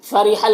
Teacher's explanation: را کے نیچے زیر ہے، را کو باریک پڑھیں گے۔